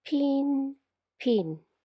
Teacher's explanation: when you say the word “pin”, you can feel a puff of air out from your mouth, and that’s why it’s called “aspirated”. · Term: unvoiced aspirated consonant